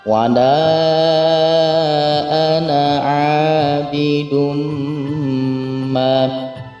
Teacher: ada ana di situ yang tidak dibaca panjang karena di huruf alifnya ada harakat sukun di situ, yang artinya tidak dibaca panjang.